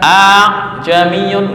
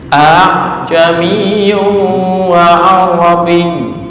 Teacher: Tashil itu memudahkan, artinya membaca antara huruf alif dan hamzah. Hamzah kan a, alif a.